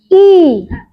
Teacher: posisi lidah kalau kita mengucapkan i itu tinggi ke depan.